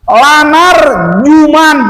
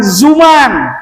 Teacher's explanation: Kalau jim jangan gitu bunyinya, salah. Nah, jadi jim itu dari tengah-tengah lidah